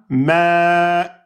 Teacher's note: À l'arrêt devient ma. Hein, on ferme les cordes vocales. Ça devient un hamza soukoun.